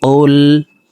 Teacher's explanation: কফ হরফের উচ্চারণ জিহ্বার গোড়া তার বরাবর উপরে তালুর সঙ্গে লাগাইয়া পড়তে হবে। তো এই পেশওয়ালা কফটি জজমালা লামকে একবার ধরবে।